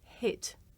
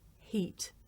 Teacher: it may be difficult to tell the difference between this vowel, the short vowel I, and another sound, the long vowel E.